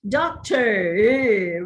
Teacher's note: the american pattern realizes the sound with a rolling of the tongue they pronounce such words as doctor where the tongue rolls back